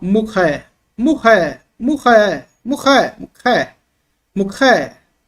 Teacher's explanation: como era uma letra aspirada e gutural, é da garganta, esse som arranhado assim. Representa CH, mas o som de esse R bem fraquinho na garganta, tá?